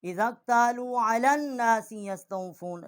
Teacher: لام کو نون کے ساتھ ہم نے مشدد کیا ہے اور یہاں غنہ کیا ہے